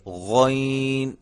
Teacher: یہ بھی حلق سے ادا ہوتا ہے, حلق کے اس حصے سے جو منہ کے قریب ہے وہاں سے یہ ادا ہوتا ہے